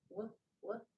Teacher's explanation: Now I'm going to say the WH sound as a blowing sound.